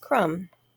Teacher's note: And you'll notice that the B is silent. When we pronounce that word crumb, we don't say B at the end.